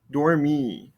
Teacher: I don't hear that ending R sound.